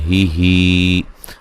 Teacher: हा को उसके मखरज से निकालना है जो कि अक्सा हलक है, ठीक है, सीने के करीब वाला जो हल्क का हिस्सा है।